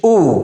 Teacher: پیش کی آواز منہ گول کر کے اس کو ادا کی جاتی ہے، اور پیش حرف کے اوپر آتا ہے، گول دائرے کی اس کی شکل ہوتی ہے، منہ کو گول کر کے اس کو ادا کرنا چاہیے.